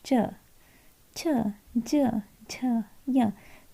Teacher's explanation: तो आपकी जो टंग है वो स्पर्श कर रही है तालु को, इसीलिए जो बना च्वर्ग में जितने भी आपके वर्ड हैं वो तालु है, ठीक है।